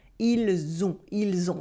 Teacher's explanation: For now, just notice how the S at the end of il sounds like a Z sound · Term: la liaison